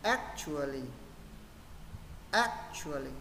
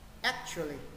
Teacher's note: với trọng âm rơi vào âm ex nên mình sẽ đọc trọng âm vào ex